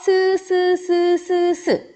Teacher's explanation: 자, 스는 입 양꼬리에 손가락을 대보시면요. 미끄러지듯이 비벼서 나는 소리가 나요. 그래서 얘는 마찰음이고요.